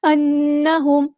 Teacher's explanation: میم ساکن پر اظہار شفوی ہوگا، ہم ٹائم نہیں دیں گے